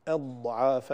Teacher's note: لا يوجد قلقلة في الضاد، إنما هي استطالة